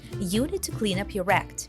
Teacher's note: The words you, clean, and act are stressed, meaning we pronounce them more clearly and strongly. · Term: stress pattern